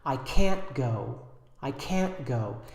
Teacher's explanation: and you might not even hear the T